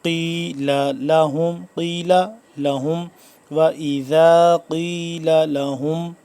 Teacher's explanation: قاف کو موٹا کر کے پڑھیں گے